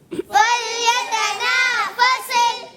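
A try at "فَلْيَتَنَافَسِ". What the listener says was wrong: جی ہاں پیارے بچوں لام کو ہلانا نہیں ہے, حرف قلقلہ سے نہیں ہے. حرف قلقلہ جو ہوتے ہیں ان میں آواز لوٹتی ہے. اب یہاں لام حرف قلقلہ نہیں ہے. حرف قلقلہ کتنے ہیں؟ 5, قاف تا با جیم دال.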